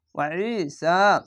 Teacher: আইন আছে, একটু গলা চিপে পড়বেন। ওয়া যাবার ওয়া, আইন ইয়ে যাবার ই, ওয়া ই সিন খাড়ে যাচ্ছে ওয়া ঈসা।